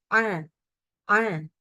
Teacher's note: pangkal lidahnya pun turun, disebutnya sebagai istifal, turun ya, jadi harus tipis. A, A, nggak boleh ya, nggak boleh dinaikin.